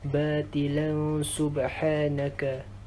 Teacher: Huruf lan tanwin bertemu dengan huruf sin perlu dengung dua harakat. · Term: ikhfa hakiki